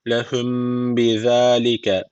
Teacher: burada dudak ihfası var. Bir elif tutmamız gerekiyor.